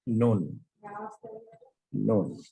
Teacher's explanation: জিহ্বার আগা উপরের পার্টির দাঁতের মাড়ির গোড়া থেকে একটু উপরে লাগিয়ে উচ্চারণ করতে হবে